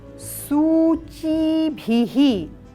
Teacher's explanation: च में ई का दीर्घ स्वर और भ में ई का ह्रस्व स्वर